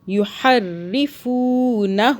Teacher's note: فو کو کھینچا، واو آ رہا ہے، واو مدہ ہو رہی ہے · ہو کو جو کھینچ رہا ہے نا وہ اوپر الٹا پیش ہے، اس لیے ایک الف کے برابر کھینچ رہے ہیں